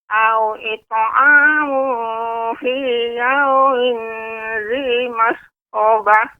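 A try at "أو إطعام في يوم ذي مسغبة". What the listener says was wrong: Pada kata fi yaumin, ya, tidak boleh fi yaumin, tidak boleh ditempelkan lidahnya dengan di atas. Fi yaumin dzi masghabah.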